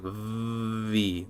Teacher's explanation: A V is when the top teeth touch the bottom lip, and you keep the sound hold